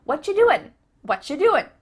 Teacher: You might notice too, extra tip, that the end of the word doing, that G, also gets cut out. · the end of the word doing, that G, also gets cut out. What you doing? What you doing? So I end that word with an N.